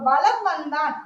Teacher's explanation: இந்த மகரம் இந்த ம் தொடர்ந்து மகர மெய்யானது வா அப்படிங்கிற மகரம் வந்துச்சுன்னா தன்னுடைய அரை மாத்திரையிலிருந்து குறைந்து கால் மாத்திரையாக ஒலிக்குது